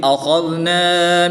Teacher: خاء حرف مستعلیہ میں سے ہے تو خاء کو پوری یعنی موٹا پڑھیں گے۔